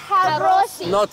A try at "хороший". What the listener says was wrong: Не холосый, а хороший.